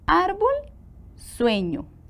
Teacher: tienen el acento en la penúltima sílaba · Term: graves